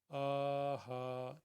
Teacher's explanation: حمزہ کے اوپر کھڑی ہے اس لیے اس کو دو حرکت کے برابر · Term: کھڑی زبر